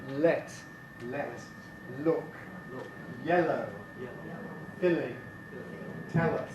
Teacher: L is lateral, that is the air escapes around the side of the tongue taking place on the alveolar ridge.